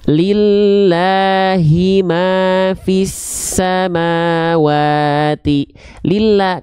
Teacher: dia diikuti oleh bunyi vokal I, maka dia termasuk ke dalam huruf yang karakternya lam jalalahnya tipis. Maka kalau tipis dibaca dengan vokal A.